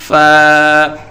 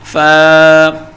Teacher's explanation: اس کے اوپر ایک نقطہ ہے، اسے ادا کرنے کے لیے اوپر کے سامنے والے دانتوں کو نیچے کے ہونٹ کے گیلے حصے پر نرمی سے لگائیں گے اور بولیں گے فا